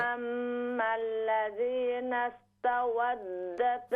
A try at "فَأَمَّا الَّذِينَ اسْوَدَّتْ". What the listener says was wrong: فأما الذين اسودت ता नहीं है